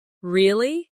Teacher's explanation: when they are surprised, their voice goes up,